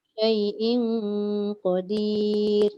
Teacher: Dengung dah ada tapi tak cukup 2 harakat.